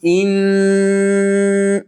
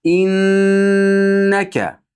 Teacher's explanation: Qarang, innaka deb hamzani aniq bildiramiz. Innaka deganda nunni g'unnasini aniq bildiramiz. in ushlab turing shoshmasdan.